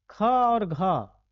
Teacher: ख और घ, इसमें हवा भी ज्यादा निकलेगा मुंह से और उच्चारण में भी ज्यादा समय लगता है